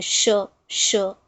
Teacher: जबान और तालू के बीच में थोड़ा सा टच होता है। घर्षण होता है।